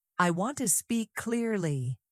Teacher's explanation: Emphasize the word clearly. This tells the listener what is important.